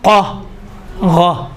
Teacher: قاف میں موٹائی ہے، غین میں نرمی ہے، تھوڑا سا نرم سے ادا ہوتا ہے۔ غین میں دیکھیں قا، غا، غا میں تھوڑا سا نرمی ہے، قاف میں تو موٹائی زیادہ ہے، تھوڑا سختی ہے۔